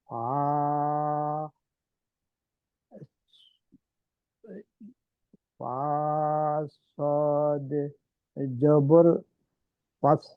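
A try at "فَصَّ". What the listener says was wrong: না, আমরা ফা এবং সদকে যুক্ত করব না । ফা ফাতহার সাথে আমরা প্রনাউন্স করব। ফা ফাতহা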